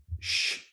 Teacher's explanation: you have the sh sound, fricative sound, sh, only air again